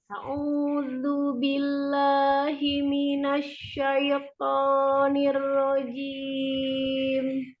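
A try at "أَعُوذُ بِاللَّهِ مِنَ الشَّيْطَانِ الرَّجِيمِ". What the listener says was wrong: Kalau itu A-nya kurang sempurna. Jadi, au gitu kan A-nya tidak A. Au. Ya, pendek tapi bukan berarti tidak sempurna ya. A'udzu. Ya, hati-hati himinas bukan himinas. Ha besar ya.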